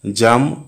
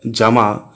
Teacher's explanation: জাম আর জামা শব্দ দুটির মধ্যে জাম শব্দের আ স্বরধ্বনিটির দৈর্ঘ্য বেশি।